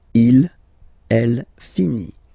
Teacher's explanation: Il, elle finit. So it, final t not pronounced.